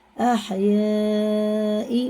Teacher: مد متصل ہے، اس کے بعد حمزہ آنا، 4 الف کے برابر سے کھینچ کے پڑھنا ، الف سے پہلے زبر ہے،